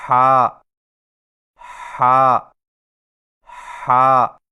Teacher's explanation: ہا کی ادائیگی میں زبان کی جڑ کو حلق کی طرف مضبوطی سے دباتے ہوئے باریک اور رگڑ کھاتی سانس میں پڑھیں، یعنی ہا ہا ہا۔